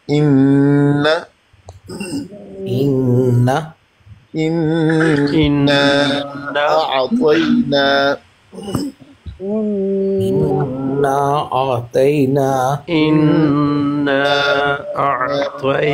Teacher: نون مشدد اور میم مشدد کو جب غنہ ادا کرتے ہیں تو ناک میں تھرتھراہٹ فیل ہوتی ہے